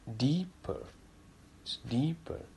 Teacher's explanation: there is no need to aspirate the pa sound